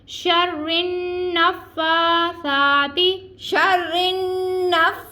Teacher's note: نون میں شدت کا غنہ ہو رہا ہے شرن ہم غنہ ادا کریں پھر نفا فا کے اوپر کھڑا زبر ہم اس کو کھینچ کے ادا کریں